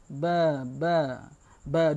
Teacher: tajwid Buddies itu eh garis segi makhroj dia di di bibir dimana bibir atas jumpa bibir bawah